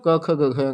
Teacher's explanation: कंठ से इसका उच्चारण होता है। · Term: कंठ ध्वनि